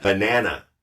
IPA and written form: bəˈnæn.ə (BANANA)